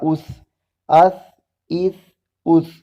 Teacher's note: اس کو ثا کو سین سے جدا پڑھنا ہے، سین میں سیٹی ہوتی ہے جبکہ ثا میں سیٹی نہیں ہوتی